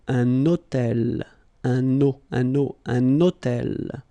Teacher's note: I'm making this little liaison, this little link between the two.